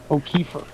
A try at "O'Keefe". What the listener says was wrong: No, there's no R. O'Keefe. Oh, it would be O'Keefe.